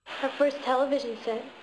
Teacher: On peut observer que le mot le plus accentué c'est television, et donc que la syllabe la plus accentuée dans toute la phrase c'est la syllabe accentuée du mot television, tel